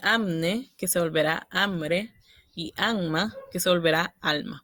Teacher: La N en ambos casos es la consonante que cambia de articulación. Se puede hacer vibrante o lateral. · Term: disimilación